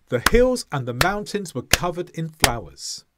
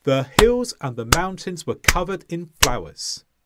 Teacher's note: mountains has two sounds, but the stress sound is the first one